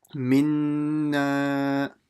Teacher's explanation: you have to read a nun mushaddada with a ghunna